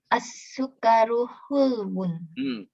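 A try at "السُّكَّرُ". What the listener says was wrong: Berhenti di kaf dulu. Berhenti sejenak. As-sukkaru. Kafnya didobelkan. As-sukkaru.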